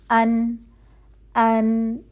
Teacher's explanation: नून की आवाज जो है वह अलख शूम से निकलेगी यानी आपकी नाक में से आवाज बाहर आएगी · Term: गुन्ना